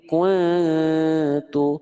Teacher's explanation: dengungannya depan mulut bukan bukan kuat di hidung lalu pastikan huruf t dibaca tipis Jangan sampai saya izin jangan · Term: ikhfa akrab